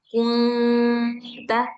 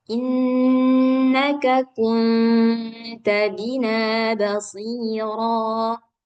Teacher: lidah kita itu digantung dia, nggak tepat menempel di makhraj nun, karena dia kan nggak boleh nempel. · Kalau ikhfa suara nun sukunnya itu samar. Samar dia antara suara nun sukun dengan antara huruf yang di depannya. Nah, karena huruf yang di depannya ini ta, maka antara nun dan ta.